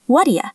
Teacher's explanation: the d and do combine into a very soft d sound like a flap. And the u becomes yah.